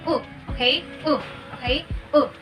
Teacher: It is a closed back rounded vowel.